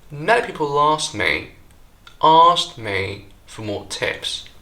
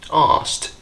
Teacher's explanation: We hate these clusters as they prevent us from getting to the next key word more quickly. So, what native speakers tend to do is to drop that k and just say asked instead